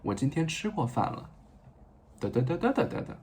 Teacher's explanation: And it sounds very flat and very almost monotonic.